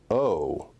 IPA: oʊ